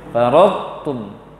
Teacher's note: Karena to lebih kuat daripada ta. To dia idbaq, tebal dia. Lebih kuat, huruf tebal lebih kuat pada huruf tipis. · Jangan gabung kita langsung sehingga menghilangkan to, tidak boleh. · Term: idgham naqis, idgham tidak sempurna